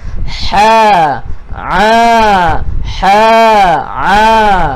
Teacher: huruf ha dan huruf ain, ha pedas dengan huruf ain, dia berada di kawasan tengah kerongkong. Kawasan kerongkong, dia duduk dekat tengah kerongkong.